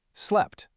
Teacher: Well, you don't actually pronounce both of them fully. You get your mouth ready for the first one, the P, but you don't release the air. You hold it. Then, you release the puff of air on the second one, the T.